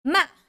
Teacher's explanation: you start with a higher pitch and come down · And then last tone, fourth tone, going down. Ma. It's kind of like yes, going down.